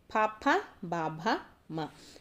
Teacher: ఓష్ఠ్యములు అంటే పెదవుల సహాయంతో పలుకుతాము